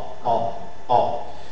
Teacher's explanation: La définition, c'est la voyelle orale et postérieure, mi-ouverte, arrondie. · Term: O ouvert